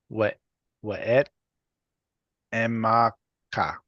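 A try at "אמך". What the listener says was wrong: When we do not pronounce the final kaf as a kha, it makes it sound very Arabic. This is one of the differences between Hebrew and Arabic.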